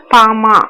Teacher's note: மேலதிடும் கீழதுடும் பொருந்த பாமா அப்படிங்கிற எழுத்துக்கள் பிறக்கும்